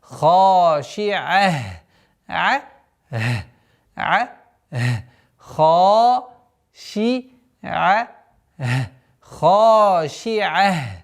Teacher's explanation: При остановке танвин дамма аннулируется и та марбута переходит в звук ха.